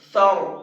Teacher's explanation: اس را کو پر کر کے پڑھیں گے، تھوڑا سا منہ بھر کے پڑھیں گے، سر، اس طرح سے۔